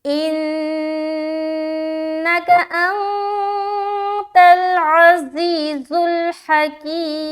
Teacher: इन्नका अंतल अज़ीज़ुल हकीम, हा जबर हा, काफ या ज़ेर की, हकी, और मीम पेश मु, हकीमु। जब वक़ करेंगे मीम का पेश हटा देंगे और यहाँ पर सुकून लाएंगे